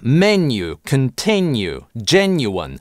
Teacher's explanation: В послеударном слоге [j] после [n] как правило сохранился в американском английском.